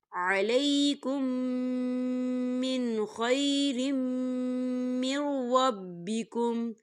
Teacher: میم مشدد ہے تو یہاں پر غنہ ہوگا